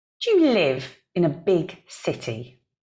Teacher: We say dia, dia. And then our stressed words are live, big, city. In and a are not important.